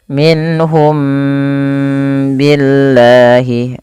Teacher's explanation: nun mati bertemu ha karena dia izhar halqi dan tidak boleh misalkan ditahan